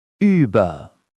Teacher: Your lips say O, but your tongue says E. The result is the high-pitched, focused Ü. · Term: U umlaut